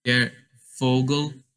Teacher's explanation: for Vogel, you say it like sort of as an F instead of a V